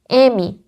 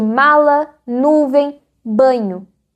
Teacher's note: O ar não sai pela boca, ele escapa pelo nariz. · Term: nasais